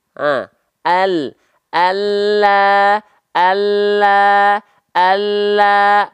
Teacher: lam itu keluar dari tepi lidah atau samping lidah depan yang kiri dan samping lidah depan yang kanan menyusur sampai ke ujung lidah disentuhkan ke langit-langit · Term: huruf lam